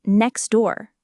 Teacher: Many native speakers will say next door, almost dropping the T. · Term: elision